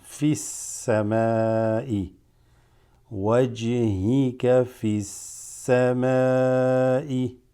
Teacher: Then we have alif lam sin huruf shamsiya. You go straight into the sin.